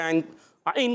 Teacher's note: ऐन अदा होते है हलक के दरमियान वाले हिस्से से